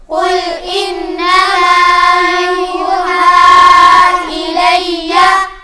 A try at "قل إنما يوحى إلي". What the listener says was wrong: یوحا اس کے اوپر مد ہے، کھینچیں گے۔ قل انما یوحا الی،